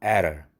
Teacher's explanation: 모음과 모음 사이에 꼈으니까 플랩 사운드 시켜야 되죠. 플랩 사운드로 변하죠.